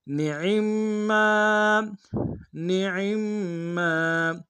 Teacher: میم کے تشدید زور دیں گے، میم کے ساتھ الف مد ایک انداز میں کھینچیں گے